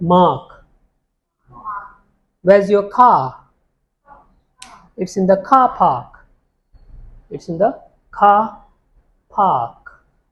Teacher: in A, the sound R is not spoken in standard British variety of English